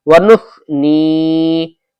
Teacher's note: اللہم انا نستعینک ونستغفرک ونؤمن بک ونتوکل علیک ونثنی میں سا ہے، ونس کا سین نہ آ جائے، ونس سا آنا چاہیے، زبان کو ہلکی سی اوپر کو نکال کے اور اوپر کے دانتوں پہ لگا کے